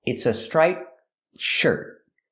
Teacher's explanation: When I put it together with a consonant, shirt, you don't really hear the T. It's a stop T. Link the sounds. It's a striped shirt. The tongue goes up, but you don't really hear it.